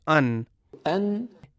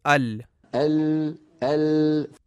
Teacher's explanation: مثال کے طور پہ ہم میں جب کوئی کہتا ہے کہ ال اور پھر کہتا ہے ان، وہ تھوڑا نیچے ہے اس جگہ جہاں لام کے لیے زبان لگتی ہے، لہٰذا نون اس طرح ادا ہوتی ہے کہ زبان کا ابتدائی اوپر والا حصہ اپنے بالمقابل مسوڑوں کو جو لام کے مخرج سے تھوڑا سا نیچے ہے لگنا چاہیے اور ساتھ ناک سے بھی آواز گزرے۔ یہ دونوں چیزیں مل کر نون کو تشکیل دیتے ہیں اور یہی نون کا مخرج ہے۔